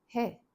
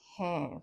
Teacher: he without the nasalization and in case of the formal address we start using the nasal sound